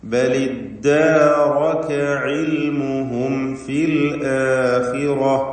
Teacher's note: ഫാ ഷഫവിയ അക്ഷരമാണ്, മീമും ഷഫവിയ അക്ഷരമാണ്. അതുകൊണ്ട് സൂക്ഷ്മതയോടെ ഇൽഹാർ ചെയ്യണം. മീം അവ്യക്തമാവാൻ സാധ്യതയുണ്ട് എന്നതുകൊണ്ട്. · علمهم എന്ന പദത്തിന് അന്ത്യത്തിൽ സാക്കിനത്തായ മീമുണ്ട്. അതിന് ഇൽഹാർ ഷഫവി നൽകി മണിക്കാതെ വെളിവാക്കണം. ശേഷം ഫാ ആണ് എന്നതുകൊണ്ട് തന്നെ സൂക്ഷ്മതയോടെ ഇൽഹാർ ചെയ്യണം.